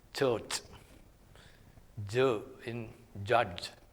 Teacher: production of that sound what happens the process is the same the articulators come together they make a firm closure but instead of a sudden release there is a very slow release this structure is known as the structure of complete closure and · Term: affricates, complete closure and slow release